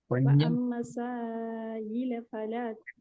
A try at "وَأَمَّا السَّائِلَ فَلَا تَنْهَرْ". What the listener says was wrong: Sound தான் கேக்குது இல்ல. ஈன்னு தான் வருது. ஈட சவுண்ட் கேக்குது இல்ல. இந்த இடம் ஈ ஈ இல்ல وأمس நீட்டாமே சிஸ்டர். இந்த அடையாளம் வந்தா எவ்வளவு நின்றும்